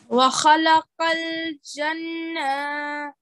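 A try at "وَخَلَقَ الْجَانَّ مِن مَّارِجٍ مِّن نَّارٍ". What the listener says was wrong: No, it's not janna. Remember the big mother where you have to prolong for about 5 to 6 seconds and then go on to the noon.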